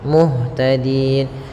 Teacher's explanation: waakaf maka nunnya menjadi sukun Muhtadin dan sebelumnya ada huruf mad maka panjangkan dulu d-nya sepanjang boleh dua harakat boleh empat harakat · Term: Mad Arid